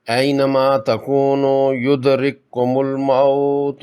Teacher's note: پہلا کاف ساکن ہے جس کو دوسرے مشدد کاف میں مدغم کر کے صرف دوسرا مشدد کاف پڑھیں گے سختی سے۔ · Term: ادغام مثلین